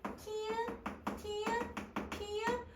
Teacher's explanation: 성대가 갑자기 팍 열리면 그 사이로 공기가 많이 지나가면서 물살이 엄청 세지는 거예요 즉 여러분 공기의이 흐름도 세지는 거예요 그러니까 더 거칠고 더 다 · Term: 거센 소리